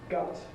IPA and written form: gʌt (gut)